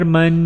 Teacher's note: غنہ کرنا ہے یہاں میم کے اوپر تنوین کی وجہ سے، غنہ یعنی ناک میں آواز